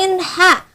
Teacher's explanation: ain ha dari wasatul halqi, dari tengah-tengah tenggorokan